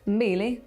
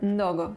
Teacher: the pre-nasalised consonants, so typical of Bantu languages